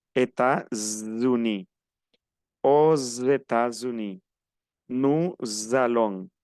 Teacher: Generalmente estas uniones cuando se hacen, si es con S, parece que se pronunciara como si fuera una Z. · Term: liaison